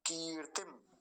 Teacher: पहली मात्रा को लंबा बोलेंगे और दूसरी मात्रा को जल्दी से बोलेंगे